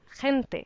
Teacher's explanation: there is a g that sounds more like an English h